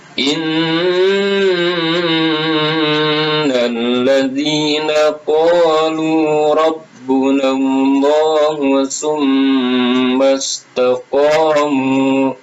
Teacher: Tahan dulu, nun disyidah itu hukumnya gunnah. Alladzina qalu rabbuna Allah mim disyidah, maka hukumnya gunnah juga, mim harus ditahan.